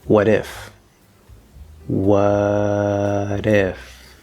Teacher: we have what if with that d sound in american english not a t sound